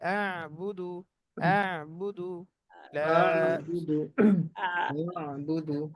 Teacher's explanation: হামজা শক্ত হবে আইন নরম হবে